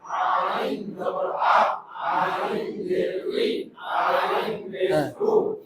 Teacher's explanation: আইন হলকের মাঝখান থেকে গলায় চেপে আদায় হবে।